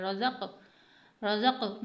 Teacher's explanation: क़ाफ़ हुरूफ़ क़लक़ला यानी आवाज़ का पलट कर आना या आवाज़ को हिला कर पढ़ना